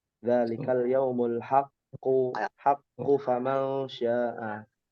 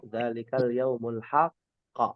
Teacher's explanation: Tidak boleh qalqalah kalau disambung.